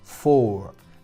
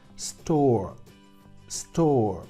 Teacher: en inglés británico no pronunciamos las R's cuando van detrás de vocal. En inglés americano sí pronunciarían esa R, pero en inglés británico lo que hacemos es que la omitimos.